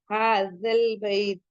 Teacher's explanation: जाल के मखरज में जबान की जो हमारी टिप है वो कहां टच होती है? आगे फ्रंट के टीथ पे।